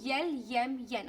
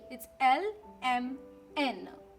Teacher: make sure you don't say the y before saying these sounds.